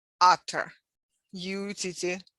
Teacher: the two t's become basically pronounced as d